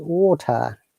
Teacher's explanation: letter t is very strong and stressed in british english